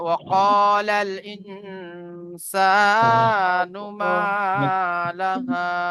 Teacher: তাহলে ওয়াকালাল ইনসানু মা লাহা, এখানে দেখেন আহ নুন সাকিনের পরে সিন এসেছে, নুন সাকিনের পরে সিন এসেছে, তাই এখানে নুন সাকিনকে একালি পরিমাণ গুণনা করে পড়তে হবে